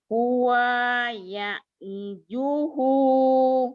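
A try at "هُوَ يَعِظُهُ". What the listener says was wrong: Huanya pendek. Huwa. Huwa ya'izuhu. Huwa ya'izuhu. Yang penting panjang pendeknya dulu.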